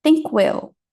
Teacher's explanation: o som do W praticamente some e a gente vai ter o som do I double L na junção com o K